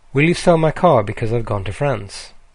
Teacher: we say my more slowly and because I've more quickly. We change the speed of the small function words so that the rhythm of the key content words stay the same. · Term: stress-timed language